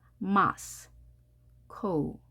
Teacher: 강세가 앞에 있기 때문에 Moscow 이렇게 됩니다.